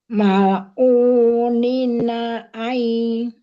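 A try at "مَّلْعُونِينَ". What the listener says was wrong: Nah, ni-nya sama u-nya panjangnya sama.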